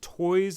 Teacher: so the toys has some throat vibration in there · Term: voiced